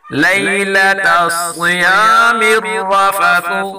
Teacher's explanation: صاد کو پر پڑھیں گے اور را کو بھی پر پڑھیں گے